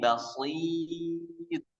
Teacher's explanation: tipiskan ya-nya. Karena ya tipis, shad tebal.